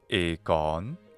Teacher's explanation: the Classical Attic pronunciation of epsilon iota is e, a long, high, mid, front vowel